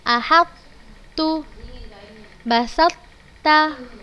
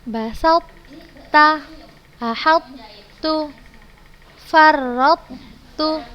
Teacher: kita seperti ingin mengeluarkan huruf to, tapi kita turunkan pangkal lidah kita seperti untuk menyebut huruf ta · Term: idgham naqis